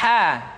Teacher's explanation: dikeluarkan dari tengah-tengah tenggorokan